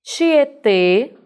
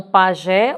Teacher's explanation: óxido na recebe acento gráfico porque terminou em é ok tietê fazendo agora uma pronúncia de um som fechado então pajé o som é aberto